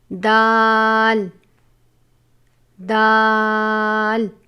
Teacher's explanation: زبان کی نوک اور اوپر کے دانتوں کی جڑ سے ادا ہوتا ہے